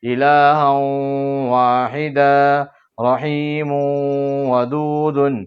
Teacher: تو 2 زبر کی تنوین کے بعد حروف یومین میں سے واو دوسرے کلمے میں آیا تو کیا کریں گے؟ 2 زبر کی تنوین کی آواز کو ناک میں چھپا کر گنہ کے ساتھ پڑھیں گے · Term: ادغام مع الگنہ